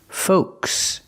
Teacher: Use the long O like know and go. Folks. The L is silent.